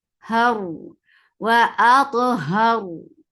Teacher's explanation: Because of this fact, we are giving sukoon on ra, and this will bring tawassut on ra. And ra will be heavy because there is fatha before it.